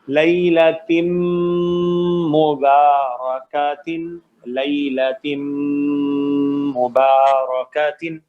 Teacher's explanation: میم یرملون میں ہے, ادغام ہوگا, غنہ بھی ہوگا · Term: غنہ کامل